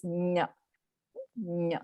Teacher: So as though you're saying cha, as though you're saying ja, but you're actually letting out a nasal sound instead. So it becomes nya.